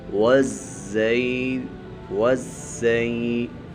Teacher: زا کے اوپر سیٹی بھی نکالیں گے